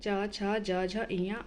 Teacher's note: जो च वर्ग है उसका वर्ण नाम है तालव्य, और उनमें व्यंजन वर्ण आते हैं च छ ज झ इयाँ